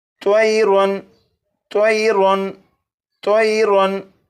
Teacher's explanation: तनवीन के बाद हमज़ा है और हमज़ा हरूफ़ हल्की में से है, इसलिए तनवीन पर गुन्ना नहीं करेंगे और इसे पढ़ेंगे त्वयरुन त्वयरुन त्वयरुन।